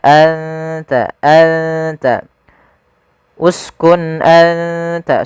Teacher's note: makhrajnya adalah ujung lidah kita, ujung lidah menempel dengan gusi atas kita, atau perbatasan antara gusi atas dengan gigi seri atas.